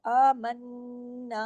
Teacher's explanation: آمنا، نون پہ تشدید ہے، غنہ ہوگا بڑا، آ کے اوپر کھڑی زبر ہے، آمنا۔